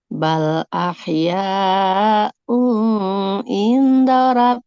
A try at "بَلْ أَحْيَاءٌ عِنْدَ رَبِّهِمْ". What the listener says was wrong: Enggak jadi ikhfa ya. Karena tanwin bertemu ain, dia bukan ikhfa. Dibacanya jelas. Bal ahyaun. Nah, bunyi nun sukun pada tanwinnya dia dijelaskan. Un, nggak samar-samar. Bal ahyaun inda rabbihim yurzaqun.